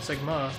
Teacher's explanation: Emphasis on the second syllable.